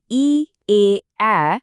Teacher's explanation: ই, এ, অ্যা বলার সময় আমাদের জিভটা একটু সামনের দিকে এগিয়ে আসে, তাই এগুলোকে বলা হয় সম্মুখ স্বরধ্বনি